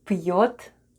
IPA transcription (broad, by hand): p'yot